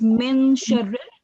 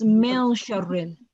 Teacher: It's concealing the noon sound. So you have to conceal the noon sakin sound. Instead of min sharril, it's mil sharril. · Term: ikhfa